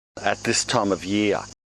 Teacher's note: Again, he replaces the R sound with the schwa sound.